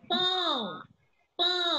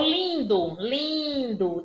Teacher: é o som que sai pela boca e pelo nariz ao mesmo tempo